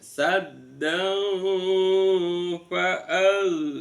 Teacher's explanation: Saddan pada saat kita baca wasol enggak kita wakofkan, maka fathatain bertemu dengan fa dibaca ikhfa hakiki, samar antara nun sama fa, seolah-olah berbunyi mim